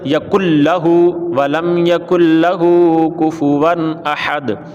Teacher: یقل لہ میں غنہ نہیں کیا، تو یہ کہتے ہیں کہ لام اور را میں غنہ نہیں کرنا